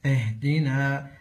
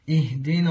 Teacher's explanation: ومن الاخطاء عدم اخلاص كسره همزه الوصل عند الابتداء بها